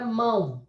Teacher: Na palavra mão, eu tenho uma letra que é nasal. Então, esse ditongo vai ser nasal